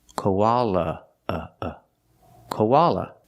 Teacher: the last a is pronounced with a relaxed uh uh sound like cup and up